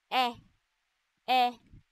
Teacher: ang letrang E naman na nasa ayos ng dila na gitna at sa bahagi ng dila na harap